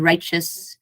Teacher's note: it is added at the end righteous so if you know the T here will sound more like ch